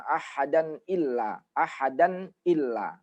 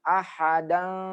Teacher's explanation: Nah, jadi an-nya itu bunyi nunnya itu, bunyi n-nya betul-betul nampak sekali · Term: izhar